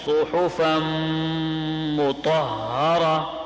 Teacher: اب سواد کو کتنا خوبصورت آپ نے پڑھا، سواد آپ کا ٹھیک نکلا، ہا ٹھیک نکلا، اور فا کے بعد غنہ، طا موٹی، را موٹا